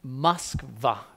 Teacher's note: It also becomes A in Russian. A short O in Russian becomes A.